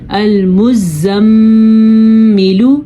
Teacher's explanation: میم کو ادا کرتے ہوئے آپ کے ناک میں گونج پیدا ہوتی ہے جس کو ہم وائبریشن کہتے ہیں, اور اسی طرح نون کو ادا کرتے ہوئے بھی ناک میں گونج پیدا ہوتی ہے. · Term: غنے